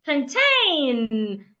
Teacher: The N at the end of plantain must be heard. Plantain. The N must be heard.